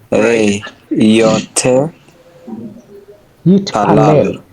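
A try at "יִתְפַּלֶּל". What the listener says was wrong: So we need to get sharper at recognizing the function of the shva as a closer. It's not pronounced, but it's a stop sign. It would be yeet. Right, yeet.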